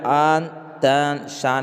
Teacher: نون صاف صاف بولا جا رہا ہے، ظاہر کیا جا رہا ہے، ناک میں آواز نہیں جا رہی ہے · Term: نون ظاہرہ